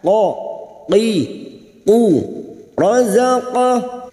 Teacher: Huruf qaf adalah huruf isti'la, huruf tebal. Lidah kita terangkat.